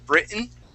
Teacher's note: okay britain is spelled with two t's there but we uh we swallow those t's